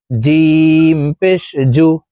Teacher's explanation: জিম হরফ জিহ্বার মধ্যখান থেকে উচ্চারণ হবে